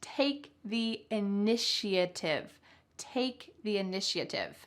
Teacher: notice that there's a sh sound in the middle even though there's no s